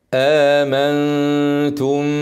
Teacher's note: هنغني الميم ايه حركتين ونخفيها